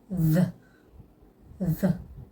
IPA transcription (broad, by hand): ð